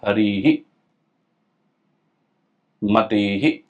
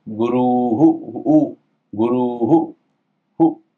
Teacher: जो अंत का जो स्वर होगा उस स्वर के अनुसार इस विसर्ग का उच्चारण होगा।